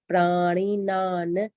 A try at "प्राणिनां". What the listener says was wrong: नहीं, नान नान नान दूसरा वाला न पूरा नहीं आता है, हाफ बोलेंगे। नान